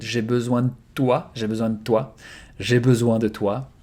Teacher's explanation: Actually the D is almost silent. It's like a double consonant.